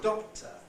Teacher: don't normally aspirate before another closely in a word like doctor the K there doctor you can hardly hear it